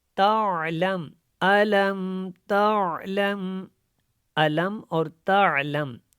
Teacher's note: یہ جو تعلم کا عین ہے اس کو آپ نے حلق سے ادا کرنا ہے، اس کی جگہ پہ آپ نے حمزہ نہیں پڑھنا، تعلم جھٹکا نہیں دینا، اور تعلم بھی نہیں پڑھنا، یہاں پہ الف کو بھی نہیں لے کے آنا۔